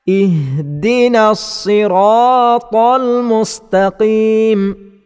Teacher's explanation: dengan bunyinya ih mustaqim maka bilaana kita perhatikan pembaca telah mengubah huruf ha yang sepatutnya dibaca dengan pangkal halkum tetapi pembaca telah menukar huruf ha kepada huruf ha yang dibaca